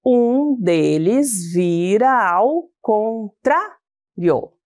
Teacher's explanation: Observem que paramos na sílaba tra, que é a mais forte, e excluímos a sílaba rio. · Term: sílaba tônica